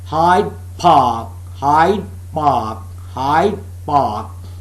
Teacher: And then Hyde Park, the last d is converted into b. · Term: assimilation